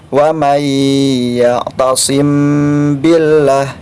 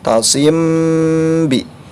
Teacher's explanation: Mim sukun bertemu dengan huruf ba, maka dibacanya harus didengungkan dengan dengungan panjang 2 harokat. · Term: ikhfa syafawi